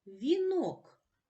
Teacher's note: звуки а у і о вимовляються виразно і в ненаголошених складах